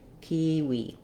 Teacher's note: in kiwi it's an exception, so you have a tense E sound in both · kiwi has first syllable stress, and because it's not a typical pronunciation for English, the letter I does say E in kiwi. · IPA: /ˈkiːwiː/